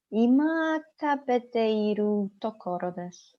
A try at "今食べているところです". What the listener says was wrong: Very good. Yes, excellent.